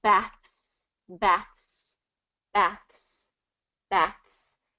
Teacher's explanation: voiceless TH is going to be a little bit easier, not incredibly easier, but baths, baths, baths, baths. So we're getting that TH sound between the teeth, but then we're going to pull it back and just keep that voiced off.